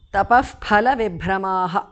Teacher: the Visarga changes to Upadhmaniya